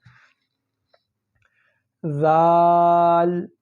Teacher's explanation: زبان کو تھوڑا سا باہر کریں گے اور اوپر والے دانتوں کے ساتھ رکھ کر ہلکا سا زور لگائیں گے، زیادہ زور آپ نے نہیں لگانا، نہیں تو یہ لفظ سخت ہو جائے گا، اور یہ لفظ سخت نہیں ہے، یہ لفظ نرم ہے، ذال۔